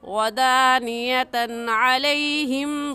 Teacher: इसकी तनवीन पर हम गुन्ना नहीं करेंगे क्योंकि तनवीन के बाद हरूफ़ हल्की में से आइन आ गया है